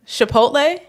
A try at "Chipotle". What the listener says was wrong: You're saying it like SH.